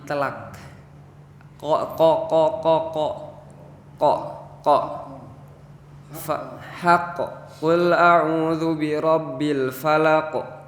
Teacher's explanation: huruf qo itu ujung tenggorokan dipentokan sebentar · jadi pengucapan huruf kok itu terasa di telak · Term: huruf qaf